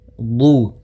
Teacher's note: pelafal du di sini ada mad tabi'i, panjangnya 2 harakat yaitu dhammah bertemu waw